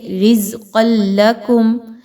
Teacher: آگے دیکھیں تو را پر کھڑا زبر ہے، اس را کو بھی پر پڑھا جائے گا، باریک نہیں پڑھنا. رزقا لکم، قاف کو خوب موٹا پڑھیں گے، زا میں سیٹی کی آواز کو لائیں گے